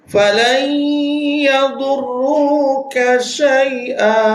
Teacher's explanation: Falan, nun mati ni disambung kepada ya. Dia nama dia idgham, masukkan idgham naqis.